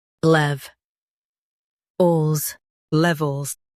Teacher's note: Emphasize lev and soften ols.